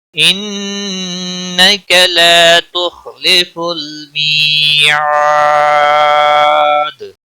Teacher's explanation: عاد مدہ ہے، ایک الف کے برابر کھینچ کر پڑھیں گے. وقف کی صورت میں دال ساکن پڑھا جائے گا، اس پر قلقلہ بھی ہوگا